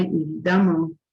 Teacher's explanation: Évidemment, se escreve com E, mas se pronuncia com A.